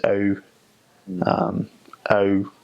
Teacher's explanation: vowels that start making one sound and end making a different sound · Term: EU sound